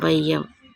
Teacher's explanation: இவ்வாறு குறைந்து ஒலிக்கும் ஐகாரம் ஐகார குறுக்கம் எனப்படும். ஐகாரச் சொல்லில் முதலில் வரும்போது 1½ மாத்திரை அளவில் ஒலிக்கும்